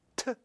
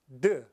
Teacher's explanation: And so we start with the t sound, and t is voiceless, The voice version is d. So it's a alveolar stop, voiceless is t, and voiced is d.